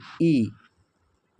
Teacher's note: इ जो है वह अग्र स्वर का उदाहरण है।